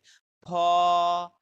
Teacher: এই ফটা আপনার দুইটা ঠোঁট এক জায়গাতে করে তারপর উচ্চারণ করতে হবে